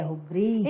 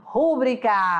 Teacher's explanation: O som mais forte não é mais da antepenúltima sílaba, né?